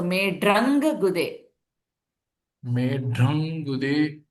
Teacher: Anuswara followed by Gude, G. So it changes to Ang sound again.